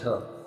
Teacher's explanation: दिए गए विकल्पों में तालव्य महाप्राण घोष व्यंजन वर्ण का सही उदाहरण झ वर्ण है